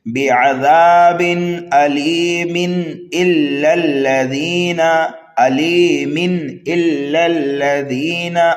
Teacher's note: تنوین کے بعد حروف حلقی میں سے حمزہ آنے کی وجہ سے یہاں پر اظہار ہوگا، جس کو اظہار حلقی بھی کہتے ہیں۔